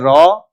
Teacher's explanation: Okay yes तो लुंठित लुंठित व्यंजन है र और लुंठित उसको कहने के पीछे है कि उच्चारण में सांस जो है वह जीभ से टकराकर लुढ़कती सी लगती है। र लगता है कि आवाज लुढ़क रही हो तो इसलिए उसको कहते हैं लुंठित